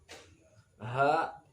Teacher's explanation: sukunnya asli namanya Qolqolah Sugro pantulannya kecil